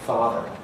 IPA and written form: ˈfɑːðɚ (father)